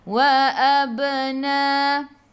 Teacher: Ba qalqalah sughra. Ingat bila adanya huruf qalqalah ada baris sukun di tengah-tengah ayat, lantunannya kecil, qalqalah sughra.